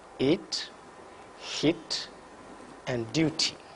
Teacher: front of the tongue is raised just above half close position the lips are enjoyed it can occur initially medially and finally